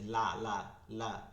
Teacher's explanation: লাম হচ্ছে জিহ্বার আগা, জিহ্বার আগা সামনের এই যে দুই দাঁত আছে এই দুই দাঁতের আগায় লাগে, দুই দাঁতের আগায়।